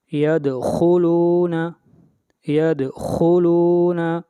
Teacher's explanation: دال کے اوپر قلقلہ ہوگا، اس کے بعد خا، اور خا حروف مستعلیہ میں سے ہے، خا کو موٹا پڑھیں گے